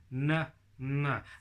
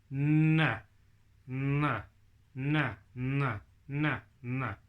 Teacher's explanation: N is right at the top of your mouth, behind your front teeth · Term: N sound